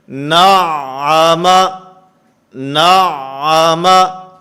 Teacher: نعم، نعم، اس کے اندر مخرج کا بھی خیال کرنا ہے اور اس کے ساتھ صفات کا خیال رکھتے ہوئے عین کے اندر آواز بند نہیں ہونی چاہیے، آواز بند ہوگی تو یہ عین نہیں رہے گا بلکہ حمزہ بن جائے گا۔ نعم، نعم، یہ آواز بند ہو رہی ہے، نعم، نعم، مخرج سے حرف صحیح ادا ہو اور اس کی صفات کا بھی خیال رکھنا ہے۔